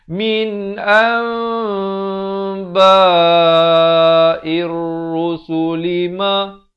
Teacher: Tetapi diberikan huruf mim kecil yang ekor mimnya ke bawah, menandakan di sini hukum iqlab, dibacakan dengan ditukarkan bunyi nun kepada bunyi mim. Daripada an jadi am.